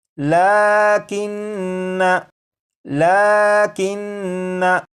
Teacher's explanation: तो इस लफ्ज़ को जब पढ़ेंगे तो इसके आखिर में जो नून मुशद्दद है इसमें गुन्ना करके पढ़ेंगे